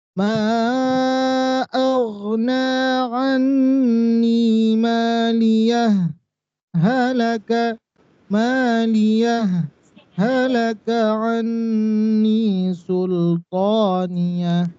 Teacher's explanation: Jadi jangan heran nanti karena memang dulu saya sampaikan setiap penerbitan sekarang ada perbedaan dari segi penulisan tanda-tanda bacanya. Maka kalau yang pakai sakta harus dijedakan tanpa tarik nafas.